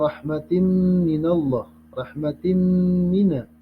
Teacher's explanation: Yang hukum bacaannya adalah idgham biguna, dan kita melebur bacaan kasratain itu dengan suara mim, namanya idgham biguna.